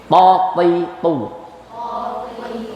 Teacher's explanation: lidah menempel ke pangkal gigi seri bagian atas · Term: Huruf to